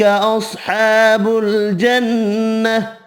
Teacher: ہا ساکن پڑھا جائے گا وف کی صورت میں